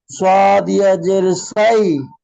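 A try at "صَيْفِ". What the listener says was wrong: সৎ ইয়া জের নয়, জাবার।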